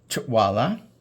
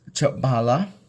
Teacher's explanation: it turned into a W, or a labial glide, which is what you call a W sound in phonetics. And so we have the labial glide here, Chawala.